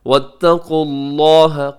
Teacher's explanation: قاف موٹا ہے, لفظ اللہ کو پر پڑھیے گا کیونکہ اس سے پہلے بھی پیش ہے